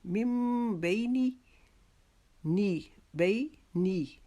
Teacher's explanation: بئی کو ہم نے ایک الف کے جتنا لمبا کرنا ہے